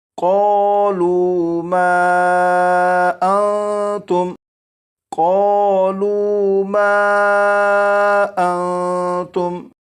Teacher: یہاں پر دیکھیں یہ جو نون ساکن ہے اس نون ساکن میں اخفا کے قاعدے کے مطابق غنہ کر کے پڑھیں گے۔